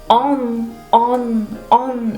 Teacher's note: Se supone que tu nariz vibra y resuena en lo que es la parte superior de la boca. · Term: la on francesa